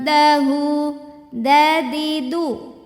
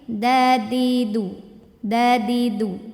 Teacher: Ujung lidah menyentuh tempat tumbuh gigi seri atas. Jadi jangan terlalu ke gusi. Jangan dadidu, jangan terlalu gede, tapi ini dadidu. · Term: dal